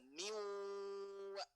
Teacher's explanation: Maka itu diidghamkan ke wawunya. Maka nun sukunnya tidak nampak terbaca. Maka langsung miwa bigunah disertai dengungan.